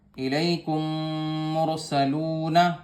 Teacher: صرف میم میں آواز میم کے ساتھ آواز ملائی جائے گی، میم کو میم میں ملایا جائے گا، ہونٹوں سے ادا کیا جائے گا. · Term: ادغام شفوی